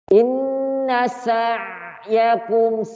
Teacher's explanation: Ain itu dari tengah tenggorokan. Inna sa'yakum masih ada ngalirnya, ya.